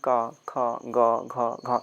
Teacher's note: का वर्ग जो का उच्चारण स्थान जो होता है वह कंठ ध्वनियों से होता है